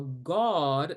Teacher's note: the vowel O or open aw were used interchangeably. For example, God turned into more of a God because that was what was familiar in terms of how they used their tongue.